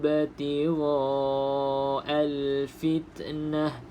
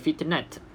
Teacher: kalau kita berhenti pada huruf ta yang bulat ni, maka bunyi dia seperti huruf ha